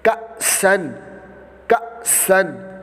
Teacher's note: کاف حمزہ زبر کا، سین دو زبر سن، کا سن، کا سن، تو یہ حمزہ ساکنہ میں ہمیشہ جھٹکا دے کر پڑھنا ہوتا ہے۔ جس طرح یہ حمزہ قوف زیر اقو، را حمزہ زبر را، اقرا اقرا، یہ را جو ہے یہ ہم جھٹکا دے رہے ہیں، تو یہ حمزہ ساکنہ ہے۔